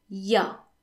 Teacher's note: In fact, it's rarely pronounced il y a. Most people would just say ya.